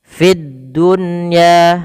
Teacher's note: Ada di sini alif lam kita namakan dengan alif lam syamsiyah. Yaitu alif lam yang tertulis tapi tidak dibaca lamnya. Langsung ke huruf dal dan dia ditasydidkan.